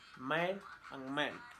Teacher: Place of articulation, bilabial. Manner of articulation, nasal. Voiced, voicing, voiced.